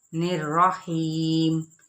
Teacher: ہی یہاں پہ یا مدہ ہو رہی ہے 1 الف یا 2 حرکات کے برابر، اور میم پر وقت بالاسکان ہو جائے گا۔